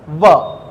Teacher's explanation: ऊपर का दांत और नीचे का ओठ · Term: दंतोष्ठ व्यंजन